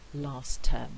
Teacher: I can get rid of the T and I end up with last term where the T is missing